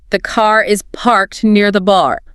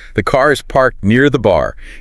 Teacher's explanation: In a lot of British English, the R often just disappears. It goes silent. Especially at the end of words or before another consonant sound. Exactly. So car becomes ka. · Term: non-rhotic